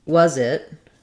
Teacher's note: voice sound is needed for example if I'm saying was it when I link that together my word was has the voiced sound